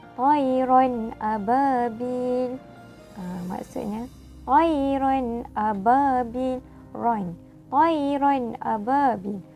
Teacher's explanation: Maksudnya dekat sini kita tidak dengung dekat ron ababil tu. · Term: izhar halqi